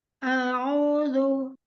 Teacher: Hamzah, makhrajnya dari aksol halqi ya, tenggorokan bagian bawah pangkal tenggorokan dekat pita suara